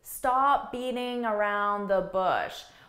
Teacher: I'm not really reducing any of the sounds. I'm not dropping any syllables. I'm saying each word fully. I'm just saying it at a faster pace.